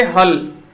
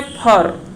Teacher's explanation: तो ये भी आपको ध्यान रखना है कि ल कई बार जो वो खोरठा में र में परिवर्तित हो जाता है